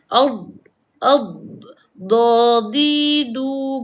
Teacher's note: dia macam D itu tak habis sebut tetapi bukan melantun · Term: istitalah